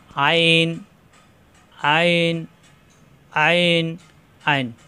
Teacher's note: আইন কন্ঠনালীর মাঝখানে চাপ দিয়ে উচ্চারণ করতে হবে